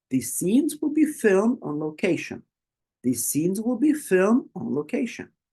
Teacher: the highlighted words are scenes filmed and location so try to use your voice to go up to rise it up a bit on those specific words